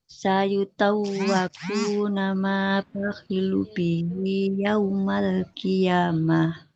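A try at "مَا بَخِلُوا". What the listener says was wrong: Ma bakhilu. Lamnya domah. Huruf domah ada waw. Huruf berharap domah ada wawunya. Jadi panjang ya. Dua harokat. Ma bakhilu bihi yaumal qiyamah.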